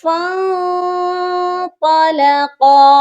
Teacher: تو یہ پڑھا جائے گا فاں، ٹھیک ہو گیا؟ اور نون ساکن پر اخفا کریں گے، یہ پڑھا جائے گا فاں طلقا، قا کو بھی موٹا کریں گے اور قاف کو بھی موٹا کریں گے۔